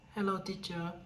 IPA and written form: həˈloʊ | ˈtiːtʃər (Hello, teacher)